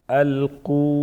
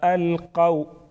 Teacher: इब्तिदा में अल्क़ू व मद्दा के साथ, यहाँ पर अल्क़ौ वाव लीन के साथ है